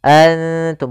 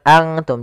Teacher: nun makhrajnya di langit-langit, ujung lidah menempelkan dengan langit-langit. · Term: ikhfa aqrab